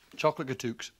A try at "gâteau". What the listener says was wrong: I mean, I don't mean to make you look like an idiot or anything, but I think you'll find it's gâteau. Yeah, the X is silent. Gâteau. That's right.